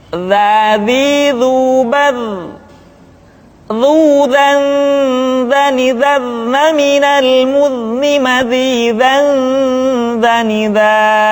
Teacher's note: Diucapkan dengan menyentuhkan ujung lidah dengan dinding dua gigi seri bagian atas seperti kita mengucapkan huruf tha. Ujung lidah boleh ditampakkan ataupun tidak nampak. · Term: huruf za